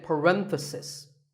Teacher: The stress is on ren.